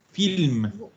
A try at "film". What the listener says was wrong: no como en inglés, no es film, es film.